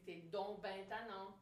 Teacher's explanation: En français québécois, l'adverbe bien, on le prononce ben